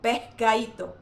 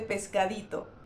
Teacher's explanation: no en todas las ocasiones esa S se elide, sino que en algunas ocasiones se aspira, por ejemplo, se pronuncia con la garganta pescadito en lugar de pescadito.